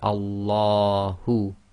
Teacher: the lam of Allah is tafkhim because we're reading it as if there's a fatha before it